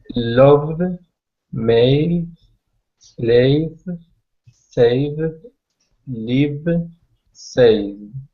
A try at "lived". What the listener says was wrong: Be careful that you don't pronounce the E after the V. It was sounding a little bit like lived, livid. It has to be lived. No sound. It's from the V to the D.